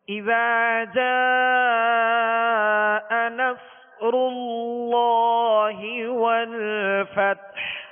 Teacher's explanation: صاد کو پر پڑھنا ہے اور سیٹی کی آواز میں پڑھنا ہے